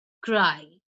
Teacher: the long I sound formed by the Y joins with the two consonants to create one syllable